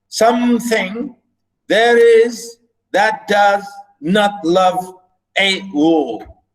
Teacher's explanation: this is how we scan we say again unstressed stress unstressed stress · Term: iambic